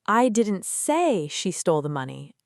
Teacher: Stressing I means someone said it, but not me.